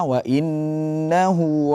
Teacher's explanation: Nun bertasdid harus ditekan ghunahnya